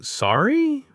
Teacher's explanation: just a simple questioning, sorry, with a rising intonation